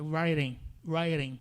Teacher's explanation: O primeiro R é esse R característico, forçado, ra, write, tipo drive. O T acaba parecendo um som de R, mas aquele R que você não força muito, né? E aí vai ficar writing, writing.